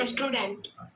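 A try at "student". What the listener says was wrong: स्टूडेंट नहीं होता है बेटा, एक्चुअल में हम बोल देते हैं स्टूडेंट, पर ई को हमें कोशिश करना है कि आवाज नहीं आए, तो फिर क्या होगा, स्टूडेंट। क्या होगा, स्टूडेंट।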